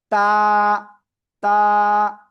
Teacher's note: জিব্বার আগা উপরে দুই দাঁতের গোড়ায় লাগিয়ে আমরা এই অক্ষরটা উচ্চারণ করব।